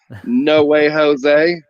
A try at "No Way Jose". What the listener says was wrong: It's Josie. That's a J, not an H.